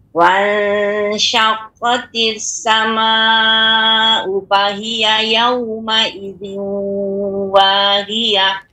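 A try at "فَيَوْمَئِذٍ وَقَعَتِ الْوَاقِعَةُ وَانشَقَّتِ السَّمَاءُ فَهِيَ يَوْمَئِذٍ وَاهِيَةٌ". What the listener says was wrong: Fa, pengucapan fa lebih diperjelas lagi Ibu. Fa yauma wanshaqqatis sama'u fahiya fa. Jadi lebih diperbanyak lagi agar lebih jelas.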